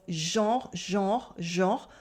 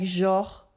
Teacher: You can pronounce it with the nasal en of genre, genre, genre, or with the o like genre. People say it either way.